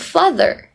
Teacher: So the next one is the R sound. Leave the R out, completely omitted, and which means in every words that has R, British actually doesn't pronounce R.